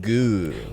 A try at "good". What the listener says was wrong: You don't hear the D. Good. There's no D. Good.